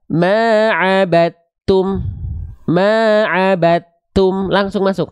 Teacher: Abattum, dalnya udah betul-betul nggak ada, langsung masuk ke ta, makanya taknya ditandai dengan tanda tasydid. Jadi seolah kita langsung baca dari ba langsung ke ta fokusnya, dalnya dianggap tak ada, sudah diidghamkan, sudah dimasukkan ke huruf ta. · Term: idgham mutajanisain shaghir